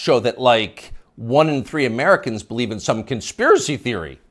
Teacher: the upspeak, the rising inflection at the end of the sentence